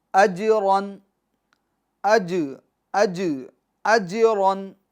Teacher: तो यहाँ पर जीम में कलकला होगा यानी आवाज़ को लौटाएंगे हम